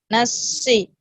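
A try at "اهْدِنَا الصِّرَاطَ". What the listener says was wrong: Ya, jadi Bu jadi mulutnya ke samping sama seperti si. Jadi si itu mulut ke samping. Jadi bukan nafsi. Jadi kalau ke depan itu enggak cocok harokat. Nafsi sama seperti si. ke samping mulutnya.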